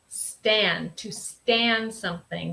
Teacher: you pronounce stand very nasal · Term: Michigan accent